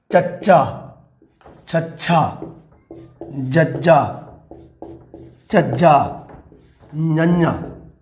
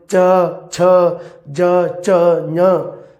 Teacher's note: ਜਦੋਂ ਬੋਲਦੇ ਆ ਤਾਂ ਉਦੋਂ ਤਾਲਵੀ ਧੁਨੀਆਂ ਇਹਨਾਂ ਨੂੰ ਕਿਹਾ ਜਾਂਦਾ ਹੈ, ਕਿਉਂਕਿ ਸਾਡੀ ਜਿਹੜੀ ਜੀਭ ਹੈ ਉਹ ਸਾਡੇ ਤਾਲੂਏ ਨਾਲ ਲੱਗਦੀ ਹੈ, ਤਾਲੂਏ ਨਾਲ, ਪੈਲਟ ਨਾਲ